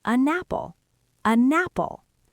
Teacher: A native speaker takes the n and pushes it onto the apple. So it actually sounds like you are saying an apple.